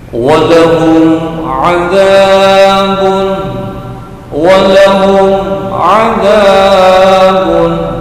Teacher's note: Cara membacanya adalah jelas, tidak mendengung pendek. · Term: idhar syafawi